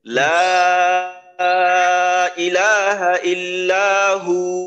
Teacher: লা তিন আলিফ টান, ইলা এক আলিফ টান, ইল্লা এক আলিফ টান, শেষে অক্ফ করতেছি যেহেতু, তো হু এখানেও এক আলিফ টান হবে।